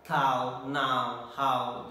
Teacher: A is open and U is above half closed. So it is again towards closing. So this is also a closing diphthong. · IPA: /aʊ/